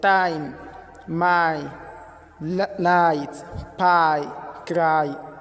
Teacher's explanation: We pronounce it by starting on the A sound and finishing on the E sound.